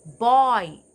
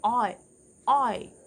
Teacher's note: ഓയിൽ തുടങ്ങി ഈയിൽ വന്ന് നിൽക്കും